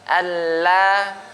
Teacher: huruf lam ini ujung lidah kita ke gusi. Gusi bagian atas.